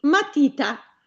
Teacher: la vocale tonica è sulla I che fa parte della penultima sillaba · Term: parole piane